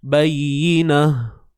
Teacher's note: Matikan ta tu dengan bunyi ha bulat. Bukan ha pedas ha bulat. · Ni ta yang bentuknya macam ni. Bila kita waqaf, bila kita berhenti padanya, maka bunyinya tu dah lain lah. Dia akan jadi seperti bunyi huruf ha. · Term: ta marbutah